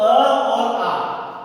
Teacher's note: अब अ और आ जो स्वर हैं ये कोमल ताल के हैं।